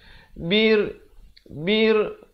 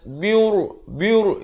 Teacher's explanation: Bir, jangan baca biur, itu jadi tebal. Di sini ro-nya baca nipis.